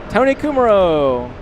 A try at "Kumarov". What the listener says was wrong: Kumarov. I've always said Kumarov with a V. Kumaro. It's a W.